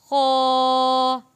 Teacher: खौ भी मोटा और पुर आवाज़ को भारी करके पढ़ने वाला लफ्ज़ है